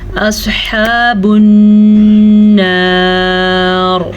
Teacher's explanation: اور پر پڑھنے کی وجہ یہ ہے وقف کی صورت میں را ساکن ہو گئی. را ساکن سے پیچھے حرف پہ زبر ہے تو اس زبر کی وجہ سے را کو ہم پر پڑھیں گے